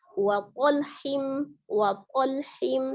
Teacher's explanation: Wa qalhim, tebalkan di huruf qa, jahr ya. Tidak ada udara yang mengalir ketika mengucapkan huruf qa. Ketika ada hembusan nafasnya, hembusan udara, berarti terbaca ta ya.